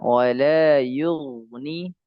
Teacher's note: jadi ada ghain yang kasrah, sukun kasrah tapi dia ditebalkan dan itu boleh karena dia sifatnya isti'la